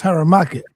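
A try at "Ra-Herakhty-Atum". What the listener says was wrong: Yeah, so it's just a mispronounce. It's Ra Herakuti Tem. You have to have the Tem on the end of it.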